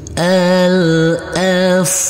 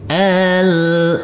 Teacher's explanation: Untuk huruf tak marbutoh ini, karena kita wakafkan, maka berubah menjadi huruf H.